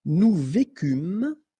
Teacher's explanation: Nous vécûmes, final S not pronounced